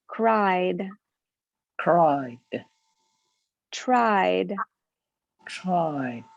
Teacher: these are voiced sounds we feel the vibration in our neck and so they have the d ending